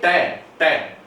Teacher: It is a consonant sound made with the tip और the blade of the tongue. जो टंग की जो टिप और ब्लेड है वो touching the bony ridge behind the upper front tip. · जो हमारे टंग की जो टिप और जो ब्लेड है टंग की, वो टच करती है बोनी रिज की। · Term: एल्वियोलर